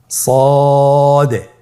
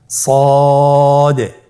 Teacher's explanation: জিহ্বার আগা, সামনের নিচের 2 দাঁতের পেট ও আগার সঙ্গে লাগিয়ে উচ্চারিত হয়। তাহলে আপনারা জিহ্বার আগা, সামনের নিচের 2 দাঁতের পেট ও আগার সঙ্গে লাগিয়ে উচ্চারণ করুন সদে।